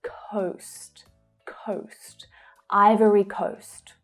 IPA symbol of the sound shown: əʊ